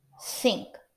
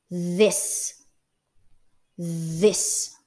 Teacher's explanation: the th sound in this is produced with vibration in our vocal cords therefore it is considered a voiced consonant sound